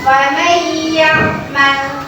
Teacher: Nah, jadi kenapa? Nah, huruf nun matinya masuk ke dalam huruf ya, maka disebut dengan idgham biguna · biguna adalah memasukkan dengan didengungkan